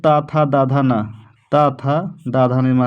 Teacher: हमारा त वर्ग क्या होगा दंत होगा